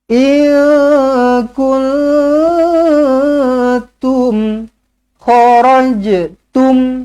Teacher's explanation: Nun kosong bertemu kaf, nun kosong bertemu ta. Kedua-duanya ikhfa hakiki, kedua-duanya dengungkan dengan dua harakat.